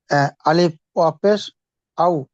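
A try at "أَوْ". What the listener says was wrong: আলিফ পেশ পেশ হলো। ওয়াও জবর হবে, পেশ না। আলিফ ওয়াও জবর আও। আও হবে, ওয়াও না। আলিফ জবর আও।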